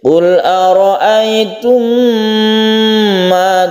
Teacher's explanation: Ada mim mati bertemu dengan mim, ini kita sebut dengan idgham mimi, bagian dari idgham mutamatsilain. Mim dan mim ketemu mim ini dibaca panjang sebagai gunnah karena ini membentuk mim yang bertasydid. Qul ara'aytum ma, jadi membacanya kita tahan di sini biar gunnah atau biar panjang dulu.